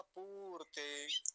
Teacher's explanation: त्वमिष्टा पूर्ते, और पूर्ते में कैसा, कैसी मात्रा है, दीर्घ उकार, बड़े ऊ की मात्रा, तो खींच के बोलेंगे लंबा